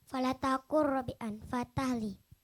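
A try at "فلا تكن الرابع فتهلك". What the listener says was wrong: Fatahlik ya, falatakun rabi'an fatahlik. Nah, bagian itu aja yang tadi kurang kedengeran, kurang jelas pengucapannya. Tapi barusan alhamdulillah lebih jelas, artinya tadi itu terlalu semangat dan terlalu cepat juga.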